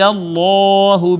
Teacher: اس میں جلالت کا ما قبل مفتوح ہے، اس میں جلالت مفخم پڑھا جائے گا ، الف المدیہ صغیرہ ہے، ہا کے نیچے کھڑی زیر ہے